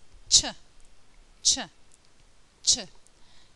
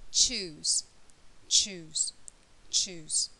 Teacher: this time the air is stopped there's an explosion of air but then there's also some friction in the mouth